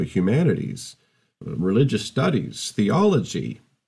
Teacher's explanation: you studying university and you say oh i'm doing humanities and you get this kind of rising intonation that comes in their voice